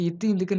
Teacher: அடுத்து இத்து, இந்துக்கு நாவின் நுனி, மேல்வாய் பல்லோட அடி. இப்பு, இம் வந்து மேல் உதடும், கீழ் உதடும் பொருந்துவதால.